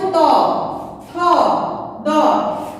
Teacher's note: দাঁতের সঙ্গে জিহ্বার ডগা লাগিয়ে যে ধ্বনি স্পর্শ হয় তাকে বলবো দন্তধ্বনি।